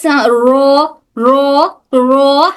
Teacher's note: अगर वाइब्रेशन ज्यादा हो तो हरफ र की गलती हो सकती है। ज्यादा वाइब्रेशन नहीं होना बल्कि हल्का सा बस र हल्की सी वाइब्रेशन होती है